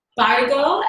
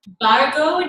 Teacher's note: that BH is aspirated which is something that happens in Sanskrit sometimes